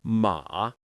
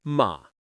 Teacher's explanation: When spoken slowly, you dip down and rise back up. But in natural conversation, it becomes a low stable tone. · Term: third tone